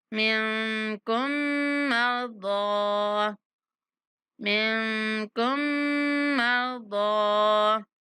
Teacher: من نون پر اخفا اور کم پر غنہ